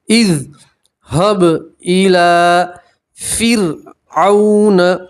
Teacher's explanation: Line के ऊपर खड़ा ज़बर है इसलिए आप एक अलिफ के बराबर खींचेंगे। इज़ हब इला फ़िरऔन, रा सकीन से पहले ज़ेर है, रा को बारीक पढ़ेंगे, पतला पढ़ेंगे।